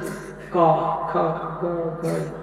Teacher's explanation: कंठ से क ख ग घ, ये 5 अक्षर कंठ से निकलता, इसलिए इसको बोलते कंठ वर्ण